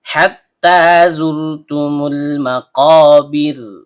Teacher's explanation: Ro, ujung lidah bertemu dengan langit-langit bagian belakang. Karena ro-nya sukun dan didahului oleh huruf yang berharokat dhammah, maka hukum bacaannya tebal atau tabkhim. Ta, ujung lidah bertemu dengan pangkal gigi seri atas.